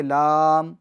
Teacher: ایک تو لام مد لازم ہو رہا ہے، اس کو ہم کھینچیں گے